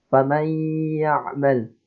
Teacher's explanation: ini ada hukum idgham bi gunnah, maka ketika kita membacanya harus didengungkan